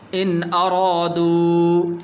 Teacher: یہاں پر غنہ نہیں کریں گے اس لیے کہ آگے حمزہ حروف حلقی میں سے ہے